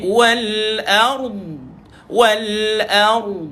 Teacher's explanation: istitalah iaitu memanjangkan bunyi huruf Dad